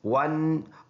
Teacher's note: واو کو ہونٹ دونوں ہونٹوں کی گول ہونے سے ادا ہوتا ہے